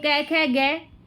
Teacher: कंठ में क वर्ग आता है पूरा